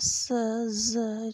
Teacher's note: फिर हमारा स, ज जो है ये एल्वियोलर हैं।